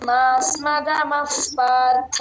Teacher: విసర్గ తర్వాత ప ఉంది కాబట్టి ఎఫ్ సౌండ్ లో చెప్పండి